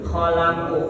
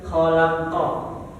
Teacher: kalau huruf huruf qof kan tebal ya Jadi agak ditutup khalaqu jadi bukan khalaqo tapi agak tertutup mulutnya aqu gitu IQ